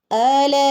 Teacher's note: ആന ഒരുപാട് നീട്ടരുത്, ആന 2 ഹറക്കത്തെ നീട്ടാൻ പാടുള്ളൂ